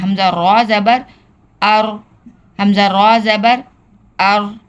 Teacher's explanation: را ساکن ہو اس سے پہلے زبر ہو تو ہم اس را کو پر پڑھیں گے، یعنی کہ ہم اس کو ہیوی پڑھیں گے، موٹا پڑھیں گے